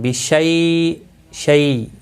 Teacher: شیء نرمی کے ساتھ تھوڑا کھینچ کر ادا کریں گے، کیونکہ یا لین ہے، یا ساکن سے پہلے جب زبر ہوتی ہے تو یا لین کہلاتا ہے، اور واو ساکن سے پہلے جب زبر ہوتی ہے تو واو لین کہلاتا ہے، حروف لین دو ہیں۔